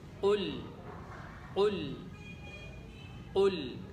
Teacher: تو ناظرین، لام جو ہے وہ ہمیشہ باریک پڑھا جاتا ہے۔ اب قوف اس کو موٹا پڑھنا ہے، لام اس کو باریک پڑھنا ہے۔